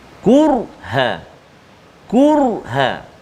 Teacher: huruf ra yang sukun ataupun mati sebelum dia baris atas, sebelum dia baris depan, maka ra tu kita bunyi, kita sebut, kita baca tu bunyi tebal